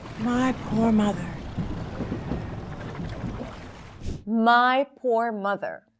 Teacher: all the words are stressed, so she stretches each one of them and even takes small breaks in between.